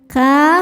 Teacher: Sebab ada alif sebelumnya baris fathah. Cara bacanya huruf kaf dipanjangkan dua harakat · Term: mad thobi'i zohiri